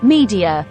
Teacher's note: The E in media falls at the end of a stressed syllable and it sounds long.